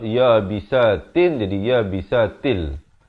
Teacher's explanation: Masuk tanpa dengung daripada ya bisatin jadi ya bisatil